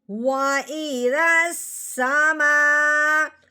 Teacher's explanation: آگے سین جو مشدد ہے اس کے ساتھ اس رال کو ملا دینا ہے · الف کے اوپر جو مد لگی ہوئی ہے اس مد کو 3 الف کے برابر لمبا کیا جاتا ہے